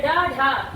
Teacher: जब किसी वर्ण का उच्चारण करने में जिह्वा की नोक झटके से नीचे गिरे तो उसे हम उच्छिष्ट व्यंजन कहते हैं। जैसे ड ढ, जिह्वा की नोक जो है आपकी झटके से नीचे गिर रही है, इसे हम उच्छिष्ट व्यंजन कहते हैं, जिसमें आता है ड आपका अल्प प्राण और ढ आपका महाप्राण।